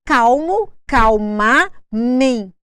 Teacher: Nós temos uma palavra aí que ela recebeu um sufixo, mente, mas ela recebeu uma sílaba mais forte exatamente no sufixo que ela recebeu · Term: acento tônico